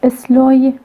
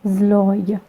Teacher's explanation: Se, which is obstruent, fricative, which is voiceless, and ze, which is voiced. These two words are different from each other just because of their first sounds.